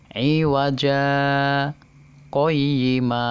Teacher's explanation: berhenti sejenak memutuskan suara selama 2 harokat tanpa bernafas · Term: saktah